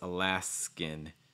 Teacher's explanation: for that n sound you're doing it with the back of your tongue down and the front of your tongue high so it's not alaska it's alas skin make sure that the